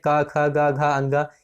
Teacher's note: कंठ होता है। तो क वर्ण का उच्चारण स्थान भी कंठ ही होगा।